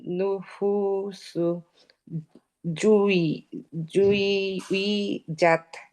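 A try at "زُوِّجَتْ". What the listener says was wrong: এটা জেড, এটা হচ্ছে জিম।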